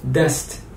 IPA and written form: dɛst (دەست)